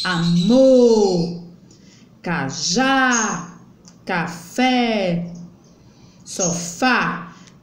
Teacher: ela é oxítona quando a sílaba tônica é a última